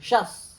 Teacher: पहला तालव्य, दूसरा दंत्य